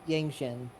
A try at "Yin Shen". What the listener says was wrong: Yin, not no G.